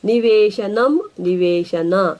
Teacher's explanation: ಪದಗಳ ಕೊನೆಯ ಸೊನ್ನೆಯನ್ನು ಬಿಡುತ್ತೇವೆ